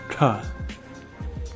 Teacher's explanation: It's the same as the previous letter, ta, a retroflex ta, but it's aspirated, so air comes out